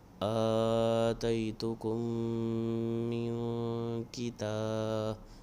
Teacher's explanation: اب یہاں پر اخفاء ہوگا، نون ساکن کے بعد کاف آ گیا